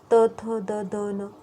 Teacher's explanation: आमचा उच्चार करताना ही जीभ आहे ती दातांना स्पर्श करते. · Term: दंत्या